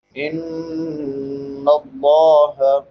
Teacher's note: نون مشدد اس پہ ہمیشہ غنہ ہوتا ہے. غنہ آواز کو ناک میں چھپا کر ادا کرنا ایک الف کی مقدار کے برابر ہے. لفظ اللہ پر پڑھیں گے کیونکہ لفظ اللہ سے پہلے زبر ہے.